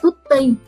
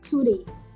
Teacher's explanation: code switch rất là nhanh từ tutti không bật hơi sang tutti bật hơi cái âm tiết đầu và dùng âm flat cho cái phụ âm giữa